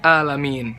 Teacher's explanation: Alamin dibacanya nggak jelas ainnya jadi hamzah